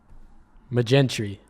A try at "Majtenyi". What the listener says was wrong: The J is silent. The J is, there's no J.